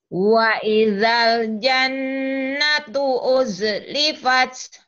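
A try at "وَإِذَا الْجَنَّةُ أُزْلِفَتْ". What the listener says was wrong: Jangan di-e-kan. Uz ya. Karena itu bukan qalqalah. Wa idzal jannatu uz. Karena bukan qalqalah kalau jim ya. Wa idzal jannatu uzlifat.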